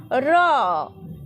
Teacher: দন্তমূলি স্পর্শ করে যে কম্পন একটা সৃষ্টি হচ্ছে হচ্ছে তো র একটা কম্পন সৃষ্টি হচ্ছে এইজন্য এই র কে বলা হচ্ছে কম্পিত ব্যঞ্জন ধ্বনি